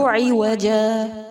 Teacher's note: ایک زبر کو ڈراپ کر کے وقف کریں گے